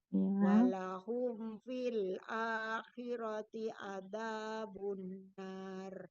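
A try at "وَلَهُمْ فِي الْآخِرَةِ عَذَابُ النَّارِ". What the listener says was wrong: Sekarang huruf H. Walahum, bukan hum tapi hu. Karena huruf H nanti mirip dengan H. Huruf ain mirip dengan hamzah atau huruf hamzah mirip dengan ain.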